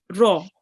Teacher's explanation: read the raw just a bit more with your mouth rounded